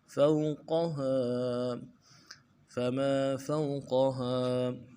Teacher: واو لین ہے، فاؤ میں بغیر کھینچے پڑیں گے، قاف کو موٹا کریں گے